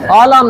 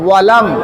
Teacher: এই যে আলাম না ওয়ালাম, ঠোঁটটা গোল করে ওয়ালাম